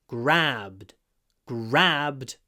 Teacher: Here the a is not clipped because it comes before a voiced zvonky b.